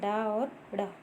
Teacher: तो दुगुड़ या उत्क्षिप्त या आगत या विकसित या तालंजात, इनका सब इनका ही नाम है, ठीक है। जिनके उच्चारण में जिह्वा झटके से ऊपर नीचे गिरती है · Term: उत्क्षिप्त व्यंजन